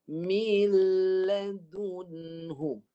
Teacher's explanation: Lepas mi, masuk dulu. Nun ni jangan sentuh. Jangan sentuh makhraj nun. Terus masuk pada lam. Sentuh makhraj lam. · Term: idgham